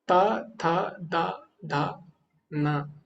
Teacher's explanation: ऊपर वाले जो दांत है उसके पीछे जीभ लगानी पड़ेगी आप त थ द ध न उस पर बिना जीभ लगाए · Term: दंत्य